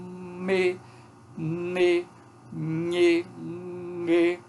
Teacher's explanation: Embora tenha uma oclusão na cavidade bucal, há uma ressonância pela cavidade nasal. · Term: consoantes nasais